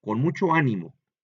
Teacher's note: en la A es donde se carga la fuerza, por eso lleva el acento.